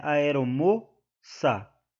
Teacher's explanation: né aeromoça então eh não é também uma oxítona se trata de uma paroxítona porque a sílaba tônica da palavra aeromoça é a penúltima